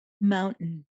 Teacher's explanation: the T is a glottal